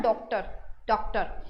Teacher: ये ओ और औ के बीच की साउंड होती है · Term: अर्धचंद्राकार